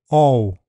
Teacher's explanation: The sound is O before dark L. The starting position is more open, further back, and rounded.